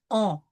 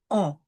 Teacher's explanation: The U through the nose, the nasal U. We won't say un, we will say on.